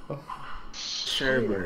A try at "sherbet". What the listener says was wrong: Okay, here's what you're doing wrong. You're putting so much emphasis on like the syllable at the end, and that's not how you say it.